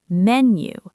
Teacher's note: menu has the stress on the first syllable.